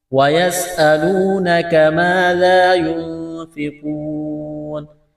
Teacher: یہاں پر وقف کریں گے تو نون کو ساکن کریں گے